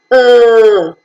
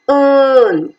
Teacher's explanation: to your position which is between half close and half open the lips are neutral and so the sound is unrounded